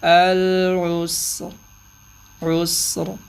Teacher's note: را پہ قلقلہ بھی نہ ہو، را کی آواز بھی پوری نکلے